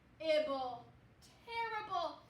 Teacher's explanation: this ER is going to say more of an air sound